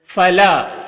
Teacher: فلا، یہاں پر الف سے پہلے لام کے اوپر زبر ہے تو الف مدہ ہوگا، اسے ایک الف کے برابر کھینچ کر پڑھیں گے